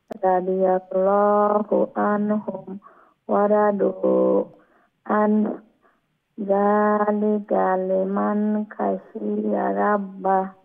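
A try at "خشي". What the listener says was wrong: খ আর একটু মোলায়েম করে উচ্চারণ করবেন, লেটা খ গলার উপরের অংশ থেকে উচ্চারণ হবে এবং ফুল মাউথ মুঠা করে উচ্চারণ হবে এবং তার মধ্যে একটা মোলায়েমতা থাকবে। এটা খাশিয়া, খাশিয়া, হ্যাঁ খাশিয়া, এরকম।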